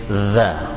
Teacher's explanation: Sama za, hujung gigi dan hujung lidah